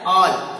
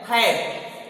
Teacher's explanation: और ए से एक शब्द बनता है ऑल, जहां पर ए का उच्चारण है अ। दूसरा ए वर्ण का ही दूसरा शब्द है हैड, यहां पर ए का उच्चारण हो रहा है ऐ